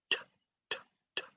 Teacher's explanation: The tip of your tongue is on the alveolar ridge or behind your upper teeth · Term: letter T